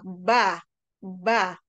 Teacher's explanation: bukan vokal konsonan yang dikeluarkan dari makhraj bibir ya dua bibir jadi bibir antara bibir atas dengan bibir bibir bawah ba ba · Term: bilabial